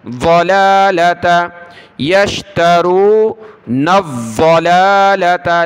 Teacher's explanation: لام کے اوپر کھڑا زبر ہے، ایک الف کی لمٹ میں کھینچیں گے